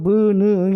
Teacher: 코는 뭐 쉴 수는 있겠지만, 자, 그래서 이거는 구강으로 흘러가지 않고 비강으로만 흘러간다는 뜻이 아니에요. 당연히 구강으로도 흘러가지만 실제 공명은 어디에서 일어난다? 비강에서 일어난다. 그게 네이절 사운드입니다.